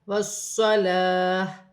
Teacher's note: واو کی صورت میں زیر گر جائے گی، تا ہا میں بدل جائے گی